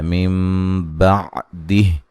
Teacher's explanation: یہاں نون ساکن کا اقلاب ہے مع الغنہ، ٹھیک ہے، نون کو میم سے بدل کر پڑھیں گے غنے کے ساتھ